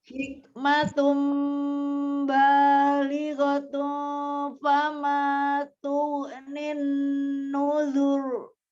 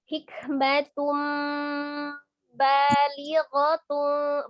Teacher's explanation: Nuzur itu enggak ada huruf yang tebal itu di nun dengan zalnya, tapi ro-nya itu karena dia sebelumnya dia dhamma ya, dia boleh dibaca tebal.